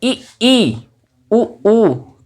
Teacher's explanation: ई, ई, उ, ऊ का जब हम उच्चारण करते हैं तो हमारी जिह्वा अधिकतम हमारे तालु से स्पर्श हो जाती है, इसीलिए इन्हें हम समृद्ध स्वर कहते हैं। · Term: उच्च स्वर